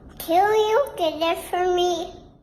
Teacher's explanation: I've slowed it down, so you're not going to hear it as short, but you'll definitely hear it's fur and not for. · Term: reduction